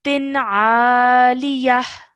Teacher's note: you're not holding the nasal sound of tin in your nose for more than 1 second. Just simply saying it and then carrying on.